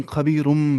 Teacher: لیکن خبیرم پڑھنا ہے، ملانا ہے میم کے ساتھ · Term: اقلاب